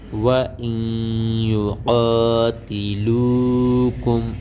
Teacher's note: واو زبر وا، حمزہ یا زیر ای، نون ساکن کے بعد حروف یرملون میں سے یا آئی ہوئی ہے، یہاں پر ادغام کا قاعدہ لگے گا، یہ غنہ ہوگا